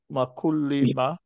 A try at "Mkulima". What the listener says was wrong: Don't bring ma. Say Mkulima.